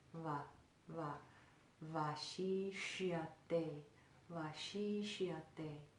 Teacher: Very, kind of in between a W and a V sound.